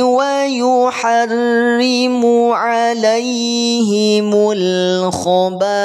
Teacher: Ba dibaca panjang 5 harokat. Nama hukumnya adalah mad wajib muttasil, MWM.